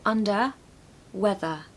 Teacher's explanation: the ER on the end of under and whether is going to be a schwa sound